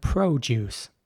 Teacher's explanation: In American English, it would be more like produce. So the O is very round.